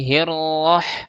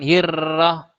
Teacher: Ketika dibaca tafhim, maka pangkal lidah kita naikkan ke atas. Jadi hirroh, jangan hirrah, roh.